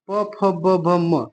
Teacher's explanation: ओष्ठ, ओष्ठ ही होंगे, क्यों, क्योंकि ओष्ठ प वर्ग होता है। जिन वर्णों का उच्चारण करते समय हमारे ओठ जो है आपस में सटते हैं उसे ओष्ठ वर्ण कहते हैं।